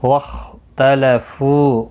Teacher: واختلفوا خا مستعلیہ ہے پر پڑھا جائے گا، اس کو ہلانا نہیں، فو واو مدہ ہے، ایک الف کی مقدار کے برابر کھینچ کر پڑھیں گے